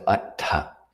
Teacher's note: So it's got that aspirate TH. In Pali, a TH never makes a th sound. There's no th in Pali. There's just an aspirated t.